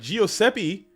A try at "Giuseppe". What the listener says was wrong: Giuseppe. When you pronounce the E, you should pronounce it A. It's A.